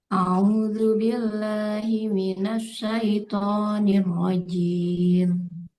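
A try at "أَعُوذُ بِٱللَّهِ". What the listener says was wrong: Jangan au, tapi a'udzu. Nah, jadi jelas pengucapan hamzah dengan ainnya. A'udzu billah.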